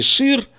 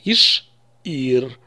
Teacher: это он оставил иш Ир слышим как мы произносим иш Ир как будто бы после ш поставил твёрдый знак не шир а иш Ир такая пауза небольшая